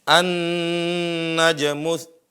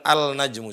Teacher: Melebur lamnya. Karena huruf lam sama nun berdekatan secara tempat keluar. Itu penyebabnya dia melebur. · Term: idgham